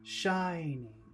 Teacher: Shining. 2 syllables. The first syllable is very big. Shining. On him is very small.